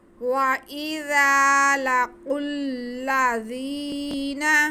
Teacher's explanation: دونوں جگہ پہ ذال کو نرمی سے پڑھنا ہے، اس میں سیٹی کی آواز نہ آئے